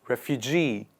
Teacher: the stress comes on the last part of the word refugee